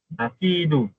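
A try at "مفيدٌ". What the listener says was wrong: Kalau ada tanwin bunyikan tanwinlah mufidun.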